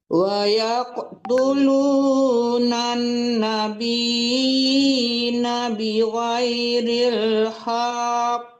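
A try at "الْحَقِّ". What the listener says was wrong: Bukan hanya yang dipanjangkan, hanya langsung ditasdidkan gitu. Cuman ditahan ditasdidnya gitu. Hak kok. Jangan hak, itu jadinya salah lagi. Jangan hanya dipanjangkan. Hak langsung ditasdidkan, malah langsung ditekan ke kaf. Cuma ditahan pas tasdidnya itu ya. Hak kok. Jangan hak, jangan langsung dilepas. Hak kok. Ditahan dulu karena dia bertasdid.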